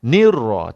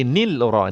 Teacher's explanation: lam ni kosong. Masuk ra terus.